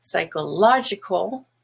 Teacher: psy has a secondary stress and that should be white the other ones are just schwa